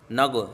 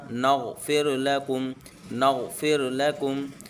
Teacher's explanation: یہ احتیاط کریں غین کے اندر قلقلہ محسوس نہ ہو